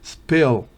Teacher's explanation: Pero spill es una I que tiende a E